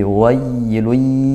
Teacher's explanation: Wainya juga hati-hati, lin ya dilembutkan, tidak ditekan atau dihentak terlalu parah. Wai tidak, tapi wailuy.